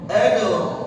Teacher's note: ada dal sukun di situ, dal sakinah, kita baca apa? Qalqalah.